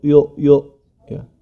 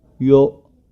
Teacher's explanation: huruf ya tetap dibaca iya, jangan sampai yo